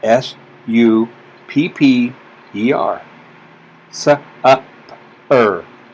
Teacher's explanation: it's really hard to hear the E in this sound. The R kind of controls the sound of it. So we put the two letters in there, and that's an R-controlled vowel.